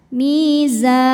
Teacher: huruf zainya panjang ya, boleh 2, boleh 4 atau 6 harokat asal konsisten dalam satu kali baca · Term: mad arid li sukun